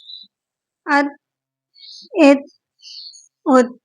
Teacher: اب تا میں ہم قلقلہ نہیں کریں گے کیونکہ یہ حروف قلقلہ کا حرف نہیں ہے